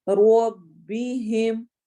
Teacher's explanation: رو موٹا کر کے پڑھا جائے گا فتحہ کی وجہ سے